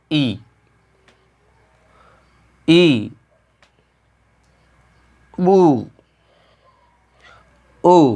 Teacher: हमारा मुख लगभग जो है पूरा बंद हो रहा है। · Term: संवृत्त